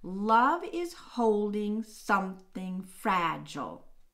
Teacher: we have four full troches because the author with fragile is keeping that last unstressed beat